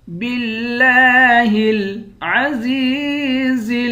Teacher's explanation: زا کو یا کے ساتھ ملا کر یا کو ایک الف کی مقدار کھینچ کر پڑھیں گے اور دونوں زا صاف پڑھیں گے۔ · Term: کھڑا زبر